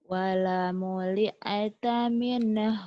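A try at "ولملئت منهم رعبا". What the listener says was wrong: Jangan. Wala muli. Jangan. Wala muli. Tak. Jangan ada e-nya.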